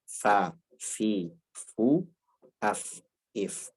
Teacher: tidak ketemu 2 bibir, tapi yang satu bibir satu gigi. Ya, yaitu batni syafah ma atrafith thanayal musyrifah.